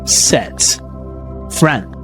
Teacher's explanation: We have a mid front vowel slightly open mouth. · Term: dress vowel